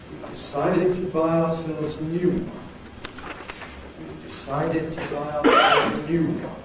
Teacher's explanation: Now, the most prominent syllable of all is new. That has the nucleus, the falling tone. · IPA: We've deˈcided to ˚buy ourselves a ˋnew one.